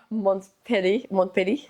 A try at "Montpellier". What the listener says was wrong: You don't pronounce the T, so Montpellier.